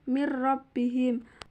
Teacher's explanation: ghunah adalah nun sukun atau tanwin bertemu dengan lam atau ra cara membacanya meleburkan nun sukun ke huruf berikutnya tanpa gunah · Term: idgham bila ghunah